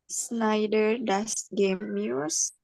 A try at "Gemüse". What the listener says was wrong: Gemüse ya, jangan gemuse ya. Gemüse.